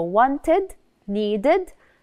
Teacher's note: the way we pronounce it as if you can hear the id at the end